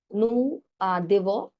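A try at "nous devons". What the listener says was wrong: না, না, দেব না, দেব, দোভ, দোভ, দোভন। না, না, I said দোভন, দওকারে দো, দোভন, রাইট, দোভন, নো দোভন,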